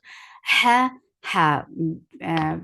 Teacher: Ha with hams from your throat.